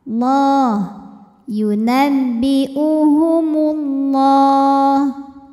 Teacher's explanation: lam jalalah ini dibunyikan secara tafkhim sebab huruf sebelumnya berbaris dhammah, maka dibacanya tebal.